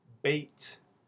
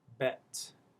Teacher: You can see more tension, wider lips, tenser lips, and a higher vowel for bait, and a lower, more relaxed one for bet.